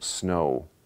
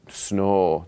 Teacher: in most varieties of american english the o is a is a diphthong so you say for example snow and it's really more like · like a wa at the end of it whereas in minnesota a lot of speakers have really what we call instead of a diphthong they have a monophthong so just one an o that's sort of held longer